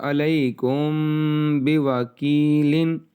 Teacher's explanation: اب یہاں یہ اخفاء شفوی کا قاعدہ، میم ساکن کے بعد حرف با آ گیا ہے، یہ ہے اخفاء شفوی